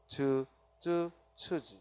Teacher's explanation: 파찰음이라고 하고. 그래서 막았다 터뜨려 스쳐내버리는 소리, 이를 파찰음이라 하고